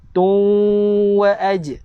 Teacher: Dengung dengan memasukkan terus ke dalam huruf waw.